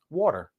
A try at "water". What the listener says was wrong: It's not water. There is no extra R. It's water. Water.